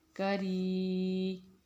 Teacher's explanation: کاف کو بھی ہم نے باریک پڑھا اور را زیر والا اس کو بھی ہم باریک پڑھیں گے